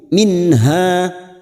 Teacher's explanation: nun sukun bertemu ha Idhar halq nun sukun dibaca jelas tanpa mendengung